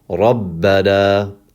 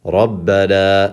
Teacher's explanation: That is actually how you're going to pronounce that word, as if there was two bas. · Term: shadda